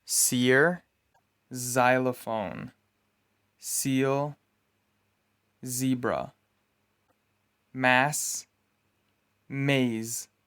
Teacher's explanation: The next two sounds are represented by the English letters S and Z. You pronounce them by placing the blade of your tongue on your alveolar ridge and forcing air out of your mouth. S is voiceless.